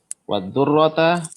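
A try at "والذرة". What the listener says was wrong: Ra-nya tidak ditasdid. Wadh-dhurata.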